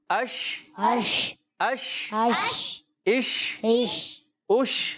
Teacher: منہ میں آواز پھیلے گی شین کے اندر